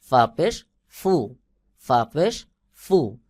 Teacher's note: ফার আওয়াজ, ফার উচ্চারণ নিচের ঠোঁটের পেট সামনের উপরের দুই দাঁতের আগার সঙ্গে লাগাইয়া হালকা বাহিরের দিকে বাতাস বের হবে